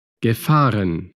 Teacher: Pero cuidado, gefahren, bueno, desde aquí ya entramos a los participios, ¿no? gefahren, Participio de conducir sigue llevando la acentuación en la A, dado que ge es un prefijo y no pertenece a la raíz de la palabra.